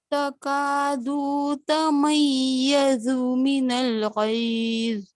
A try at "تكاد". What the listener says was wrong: اچھا دو کو لمبا نہ ہو دیں تکادو کا, دو کو تا کے ساتھ جوڑ دیں اگر نا تو پھر نہیں ہوگا. تکادو دوتا